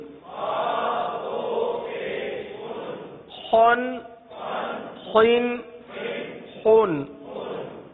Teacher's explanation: حلق سے، اور حلق کے اوپر والے حصے سے ادا ہوتے ہیں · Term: خا اور غین